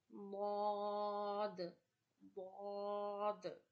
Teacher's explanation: Bod is pronounced from the sides of the tongue and upper molars. So you have to touch your whole of the tongue to the upper teeth and molars while reading bod, bod.